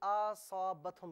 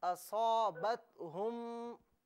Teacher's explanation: حمزہ پر چونکہ زبر ہے تو حمزہ کو کھینچنا نہیں چاہیے تھا، آپ نے اسے اصابتہم پڑھا جو کہ غلط ہے۔